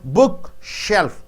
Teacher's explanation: Book should be stressed more.